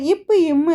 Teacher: ரெண்டு இதழ்களும் மேல் இதலும் கீழ் இதலும் பொருந்துவதால் பிறக்கக்கூடியதுதான் இப் இம்